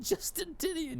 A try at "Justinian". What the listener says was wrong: Justinian? It's Justinian. There's no T there.